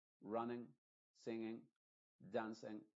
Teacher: esa I de la ing se va a pronunciar con la i modificada que es como una e